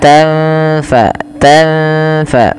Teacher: Kemudian wala tanfa'uha, tanfa sukun bertemu fa, samarkan nunnya ketemu dengan huruf fa, maka tanfa, tanfa tidak dijelaskan sebagaimana izhar, tidak dibaca wala tanfa'uha.